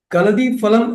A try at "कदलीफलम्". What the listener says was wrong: Kadali palam. Not kalida palam. Kadali palam.